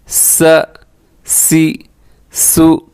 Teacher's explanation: اور اس میں بھی سیٹی ہے, اور اس میں سب سے زیادہ سیٹی کی آواز ہوتی ہے. اس پہ اپنی سیٹی کا خیال کرنا ہے.